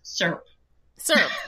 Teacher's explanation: in Texas, there is only one syllable in that word